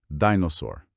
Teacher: a sílaba forte é a primeira, di, e o R final é aquele R americano, né? Mais enrolado.